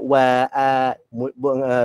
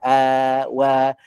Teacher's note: Sebab wa ni huruf yang nipis. Nipis ni maknanya sebutan dia wa rahang dibuka wa. Bila sebut wa huwa ala kulli syai'in qadir.